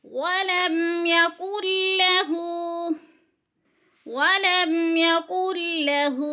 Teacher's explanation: یکن کی نون کو نہیں پڑھیں گے، نون ساکن کے بعد لام مدغم ہے، مشدد ہے، تو کاف کو لام کے ساتھ ملا کر ادغام کریں گے۔